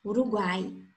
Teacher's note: Então, olha aí, na palavra Uruguai, a gente percebe o U, uma semivogal, o A, uma vogal, e o I, uma semivogal. Ou seja, um tritongo oral. O som saiu apenas pela boca.